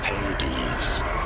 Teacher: you do want to stress on the first syllable the hey syllable